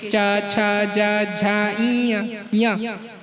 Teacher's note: अब कहे अकुह विसर्जन्याम कंठा इचु यशाणाम तालु। ई और च का उच्चारण स्थान तालु से होता है